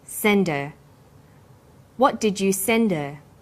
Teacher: send is the strong form and her is weak because her is not stressed we drop the initial hurt sound